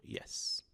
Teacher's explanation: É um I bem curtinho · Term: som J